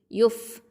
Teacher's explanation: ஃப அப்படிங்கிறது ஹம்சு சிஃபத்தை கொண்டது, ஷஃபத்தான் உதடு எழுத்து. டைமிங்கும் கொடுக்கணும், ரஹாவாக இருக்குது.